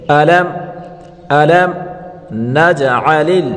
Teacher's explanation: علم میم ساکن ہے، اس کے بعد اظہار کا حرف نون آ رہا ہے، تو یہاں ہم اس میم کو ظاہر کر کے پڑھیں گے، یعنی گناہ نہیں کریں گے.